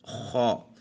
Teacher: یہ حلق کے اوپر والے حصے سے ادا ہوتا ہے